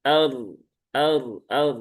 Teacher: Sebelumnya di sini ada hamzah qata yang berharokat fathah. Nah, maka roknya dibaca dengan tafkhim ya, dengan tebal.